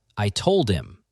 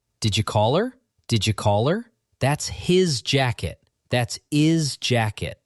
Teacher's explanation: Words like him, her, his, the H at the beginning drops in fast speech constantly.